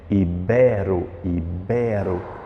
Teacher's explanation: circule a sílaba mais forte aí, que é o bé